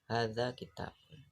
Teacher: Di antara hadza kitabun itu terdapat kesenyapan hadza kitabun, atau di antara suku katanya ha dan za, di antara ha dan za, atau di antara ki, ta dan bun itu terdapat kesenyapan.